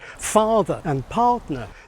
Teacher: this fake pseudo-British accent was non-rhotic, so that it didn't pronounce the r sounds in words like farther and partner